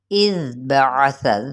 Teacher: इज़ बअस, ज़ाल नरमी के साथ, और इसको सनाया उलिया कैसे करना है, हमने इसके सनाया उलिया यानी ज़ुबान की जो नोक है वो सनाया उलिया की किस तरह से है, किनारे से लगेगी, ऊपर वाले जो दो दांत हैं उनके किनारे से